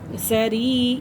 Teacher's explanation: یہ یا مدہ ہے اور اسے 1 الف کے برابر کھینچ کے پڑھیں گے